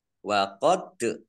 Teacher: dal sukun bacaan qalqalah dibaca memantul ditampakkan pantulannya